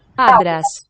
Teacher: Anytime you have a nasal followed by the voiceless stop letter, like here, na, ta, Άντρας. they're going to fuse into a d